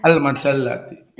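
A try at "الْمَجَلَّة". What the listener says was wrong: Nah, al-majallah, kita sukun aja Bapak ya. Nah, tapi kalau kita pengen mengharokati, itu nanti dibaca fathah ya teman-teman ya, karena menjadi objek.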